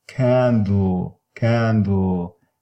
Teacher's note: It is the syllabic l, serves as a nucleus, and there is no coda.